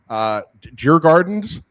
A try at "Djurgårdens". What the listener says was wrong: I asked somebody yesterday from Stockholm who had spent time there, and the garden sounded more like Gordon to me.